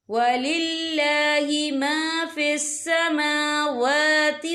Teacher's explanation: یہاں دونوں جگہوں پہ کھڑی حرکات ہے تو ہم یہاں 2 یا 3 حرکت کے برابر کھینچ کے پڑھیں گے۔